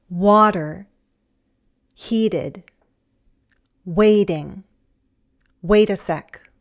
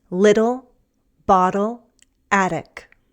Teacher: It's a quick tap of our tongue on the tooth ridge, that hard bump behind your upper front teeth. It happens when T is between two vowel sounds and the following vowel sound is unstressed. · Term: flap T